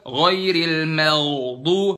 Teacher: Ghainnya bener di situ posisi ghain, cuman terlalu dalam, kelamaan, kepanjangan